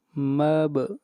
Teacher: با کے اوپر قلقلہ، آواز کو ہلایا جائے گا۔